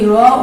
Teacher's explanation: যখন তুমি র উচ্চারণ করবে তখন তোমার জিহ্বা এবং তোমার যে জিহ্বা জিহ্বার যে অগ্রভাগটা রয়েছে সেই অগ্রভাগটা একটু কম্পনের সৃষ্টি করবে, কম্পিত হবে। এই জন্য এই বয়শূন্য রটাকে বলা হয়, বয় বিন্দু রটাকে বলা হয় কম্পনজাত ধ্বনি।